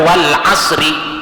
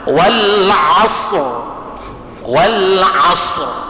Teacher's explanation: Wal jangan kita baca wal asri. Ah ro ini tapkhim dia tebal.